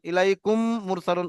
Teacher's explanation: মিম সাকিনের পরে মিম এসছে, তাই এটা একালি পরিমাণ গুণনা করে পড়তে হবে।